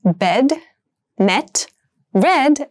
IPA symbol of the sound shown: ɛ